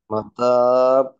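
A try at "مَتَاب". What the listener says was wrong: না, খেয়াল করে একটু, যে তোমার লিপসটা ক্লোজ হয়ে আবার নিচে আসবে, তখনও সাউন্ডটা কন্টিনিউ হতে থাকবে। ঠিক আছে, তোমার লিপসটা ক্লোজ হয়ে নিচে আসতেছে না বায়ের সময়।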